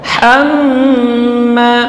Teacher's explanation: Kemudian tasydid di atas mim, ini gunnah, dibaca panjang 2 harakat. Hamma, ma tipis, ya.